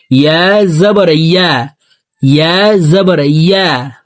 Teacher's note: আমরা অনেকে ইয়ার উচ্চারণ ইয়া জবর আ পড়ে থাকি, হামজার উচ্চারণ করে থাকি। দেখুন, ইয়ার উচ্চারণ জিহ্বার মধ্যখান থেকে উচ্চারণ হবে।